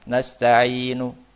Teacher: memonyongkan bibir tanda isyarat dhammah dan suaranya tidak terlalu terdengar. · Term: raum